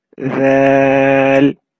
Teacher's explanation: the tip of your tongue will touch the edges of the top two front teeth and it will be read very softly